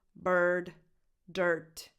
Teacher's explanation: this vowel and R combo makes a [ɝ] sound so the same sound that you have in words like “earn”, “learn”, “bird”, “dirt”